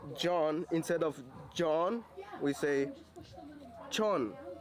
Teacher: closest sound to J, what I use is a CH